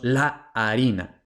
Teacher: Si la A no es tónica, aunque se den las otras tres reglas, entonces no aplicamos esta regla o esta excepción. Entonces, harina, la sílaba tónica es rina. Por tanto, decimos la harina.